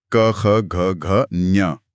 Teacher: जब हम इन ध्वनियों का उच्चारण करते हैं तो हवा का दबाव सीधे कंठ पर यानी गले के पिछले हिस्से पर महसूस होता है। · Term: कव है